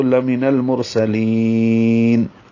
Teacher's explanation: لی یا مدہ ہے، دو حرکات لمبا کرتے، لیکن چونکہ ہم وقف کر رہے ہیں، نون ساکن کر رہے ہیں آخر میں، تو لمن المرسلین. · میم کو جلدی اور معروف طریقے سے پڑھنا ہے، نون کو لام سے ملانا ہے. نل لام ساکن پہ اظہار ہے، مرسلین میں را پر ہے، موٹا پڑھیں گے، میم کو ہونٹوں کو بند کرنے سے نکالیں گے.